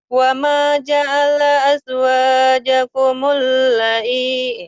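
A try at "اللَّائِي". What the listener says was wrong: Lanya panjang, lanya panjang ah.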